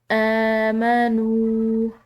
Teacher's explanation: واو ساکن ہے تو یہ واو بھی مدہ ہوتی ہے جو کہ پیش کے بعد آ رہی ہوتی ہے